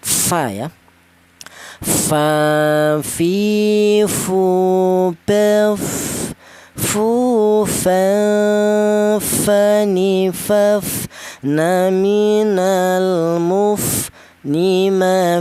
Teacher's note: huruf fa ini keluarnya huruf berasal dari bibir bawah bagian dalam kemudian menyentuh ujung gigi seri atas